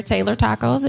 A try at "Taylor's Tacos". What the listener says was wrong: Taylor's Tacos, my name, Taylor's. Taylor's Tacos. It's not Taylor Taco. It's not Taylor. Everybody want to call everything other. It's Taylor's My name, Taylor's Tacos.